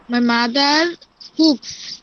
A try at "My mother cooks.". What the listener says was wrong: My mother, কুক বলবেন না, খয়ের উচ্চারণ করবেন, কুকস।